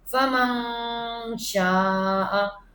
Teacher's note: شین، جو کہ نہ حروف حلقی، نہ یرملون اور نہ با، تو مطلب یہاں پہ اخفا غنہ ہوگا، ناک میں آواز آئے گی